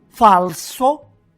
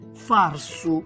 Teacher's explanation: la L italiana, che quasi sempre nel siciliano muta in R. Quindi abbiamo per esempio falso, ecco, che muta in farsu.